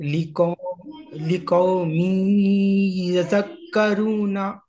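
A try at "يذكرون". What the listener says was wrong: यज़क, यज़क नहीं है ना, दाल मुशद्दद है ना, दाल को दो बार पढ़ना है। यज़क, काफ भी मुशद्दद है, यذكرون।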